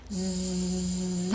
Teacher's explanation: zzz 하면서 바람이 지금 입 틈으로 zzz 하고 바람이 새어 나오고요. 자, 동시에 성대는 zzz 하고 울리고 있어요. 그래서 떨리는 소리, 새는 소리의 특징과 울리는 소리의 특징을 모두 갖춘 떨리는 소리 Z입니다.